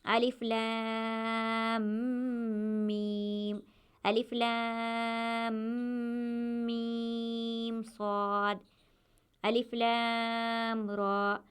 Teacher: حروف مقطعات ادا کرتے وقت میم مشدد یعنی یہاں پر گننا کرنا ہے اور مد کو کھینچنا ہے